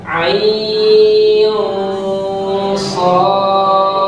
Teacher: Dan ikhfanya ditahan sama 2 ketukan.